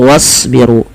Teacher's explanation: tebalkan pada lafal huruf shad karena shad termasuk huruf isti'la yang pangkal lidah kita naikkan, dan shad juga memiliki salah satu sifat, yaitu sifat idbaqnya, yaitu lidah itu lebih melekat-lekat dengan langit-langit atas.